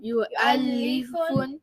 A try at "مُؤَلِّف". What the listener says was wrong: No, you replace the you with a mu. Mu'allifun. Mu'allifun.